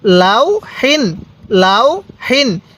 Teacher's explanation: আমরা তানবিনের উচ্চারণটা বাংলায় দন্তান্ন করব